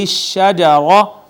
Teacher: وَلَا تَقْرَبَا هَذِهِ الشَّجَرَةَ، تو ناظرین یہ دیکھیں یہ الف مدہ ہے، اس کے بعد یہ بھی الف مدہ ہے اور یہ الف المدیہ صغیرہ ہے اور را مفخم پڑھی جائے گی اس وجہ سے کہ مفتوح ہے